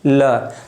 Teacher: दंत। जब हम बोलते हैं ल तो जीभ ऊपर वाले दांत को स्पर्श करती है